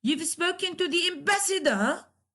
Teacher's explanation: rising tone with the question mark you've spoken to the Ambassador at the end of the sentence you rise · At the end of the sentence, you raise your tone.